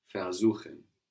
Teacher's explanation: We have the accent on suchen, showing us that ver stays put.